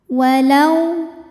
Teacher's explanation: Walau ada hukum harfulin atau huruf lin sebab ada waw sukun didahului harokat fathah, maka bacanya lembut atau lunak